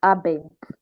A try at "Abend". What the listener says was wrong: No, no, I'm not hearing the T. I'm not hearing it. bent.